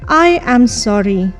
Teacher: the best tone that a person should use to convey the right meaning is falling Rising tone